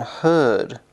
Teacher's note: your tongue is neither being pushed forward or pulled backwards but is sitting in the middle